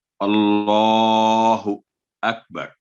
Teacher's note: जब भी अल्लाह का नाम आएगा और उससे पहले हरफ पर जबर या पेश दम्मा या फतह होगी तो हमेशा उसको पुर करके पढ़ा जाएगा, और लाम पर जो तशदीद है उसको स्ट्रेस दे के, साथ खड़ी जबर है, वर्टिकल फतह है, तो 2 सेकंड आवाज लंबी करेंगे